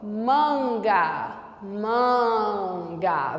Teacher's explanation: Veja como o som está na cavidade nasal, como o som sobe quando você pronuncia. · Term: vogal nasalizada